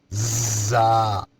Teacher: اس زا میں سیٹی کی آواز آئے گی۔ زبان کی نوک سامنے نیچے والے دانتوں کی جڑ کے ساتھ زبان لگے گی۔